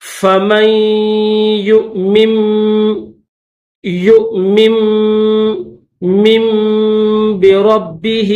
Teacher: میم کے بعد نون نہیں پڑھیں گے بلکہ میم کے بعد میم کی آواز نکالنی. یہ جو چھوٹا سا میم آپ کو دکھ رہا ہے تو اس میم کے بعد اس میم کی آواز نکالنی ہے.